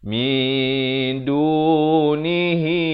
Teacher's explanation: Tapi datang dal jadi ikhfa hakiki. Di sini disamarkan kadar panjang 2 harakat.